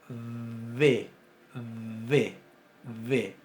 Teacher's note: labio dental y fricativa también tenemos versión sonora